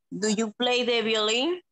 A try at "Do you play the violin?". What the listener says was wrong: Do you play the violin? Very good, guys. Well done.